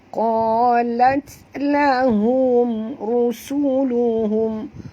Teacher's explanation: Ra sini ra tafkhim ya, ra tebal kena ra berbaris depan kena baca tebal ya. Rusuluhum har sini has simpul keluar berhalkum.